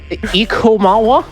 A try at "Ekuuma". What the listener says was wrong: I don't think you awa the ah. I don't think that's how uwu works. You don't awa the ah, you uwu the oo, so it's Ekuuma. Ekuuma.